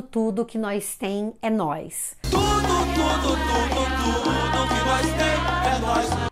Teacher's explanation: você transformar o o em oi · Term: ditongação